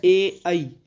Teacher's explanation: ये स्वर जो है इनका उच्चारण स्थान है कंठ और तालु, और इसलिए इन्हें बोलते हैं कंठ्य तालव्य ध्वनियाँ।